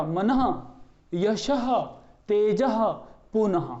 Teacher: जो विसर्ग है उसका जो उच्चारण स्थान है वो होता है कंठ